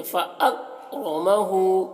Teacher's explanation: مبتلاہ ربہ، را کو پر پڑھ رہے ہیں، ربہ فاکرمہ، یہاں پر کاف میں کلکلہ نہ ہونے پائے اس کا خیال رکھنا ہے اور را کو پر پڑھنا ہے، فاکرمہ، یہ فاکرمہ ایسے نہیں پڑھنا ہے، فاک ایسے نہیں کرنا ہے بلکہ فاکرمہ، کاف میں آواز کو روک لینا ہے